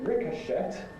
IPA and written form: ˈrɪkəʃət (ricochet)